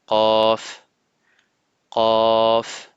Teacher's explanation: La lettre Qaf fait le son K en français, mais un K emphatique qui vient du fond de la langue en contact du palais mou.